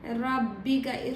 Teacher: ரோ ஃபத்தஹா இருக்கிறனால இதுக்கு ஹெவியாக உச்சரிக்கணும். ரப்பிக இந்த அலிஃபை விட்டுறணும்.